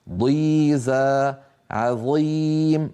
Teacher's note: مع أن الضاد قد انكسرت والظاء كذلك، إلا أن صوتها بقي قويا